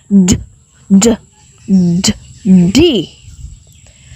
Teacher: you stop the airflow between your tongue and the ridge behind your teeth the d sound is made through the mouth and it is voiced which means that you vibrate your vocal chords to make the · the d sound is made through the mouth and it is voiced which means that you vibrate your vocal chords to make the sound